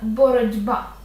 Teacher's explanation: боротьба почнемо з кінця боротьба - це знову асиміляція за дзвінкістю Т перед б дзвінким буде одзвінчуватися і звучатиме боротьба Навіть через оце одне слово нам варіант вже